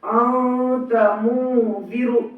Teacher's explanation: نون کی آواز کو ناک میں چھپا کر پڑھیں گے، نوک زبان تالو سے ہٹا کر، جیسے اردو میں پنکھا کے نون کو پڑھتے ہیں۔ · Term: اخفا